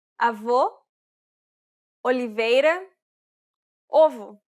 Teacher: This is similar to the previous sound, except that it's the closed version. This means that the mouth and tongue are positioned a little bit higher. It's quite similar to the O sound in the word coal.